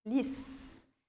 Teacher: A palavra feliz, olha só, lis, última sílaba tônica.